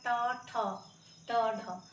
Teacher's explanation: थोड़ा सा जीभ जो है मुड़ रहा है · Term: मुर्धा